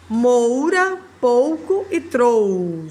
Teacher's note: nós temos sempre a união da vogal com a semivogal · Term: ditongo